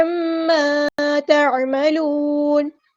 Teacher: اور یہاں پہ تنوین کے بعد کو ہم ظاہر کریں گے کیونکہ یہاں پہ اظہار ہو رہا ہے عما تعملون. عین کو وسطی رکھیں گے، تھروٹ سے ادا کریں گے، میم پہ ہونا زمانی ہو رہا ہے، الف پہ رکیں گے، الف مد ہے تو مد اس کی کریں گے عما تعملون.